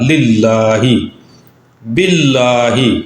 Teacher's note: لام سے پہلے با ہے اور اس کے نیچے زیر ہے، اس کی وجہ سے اس کو باریک پڑھا جائے گا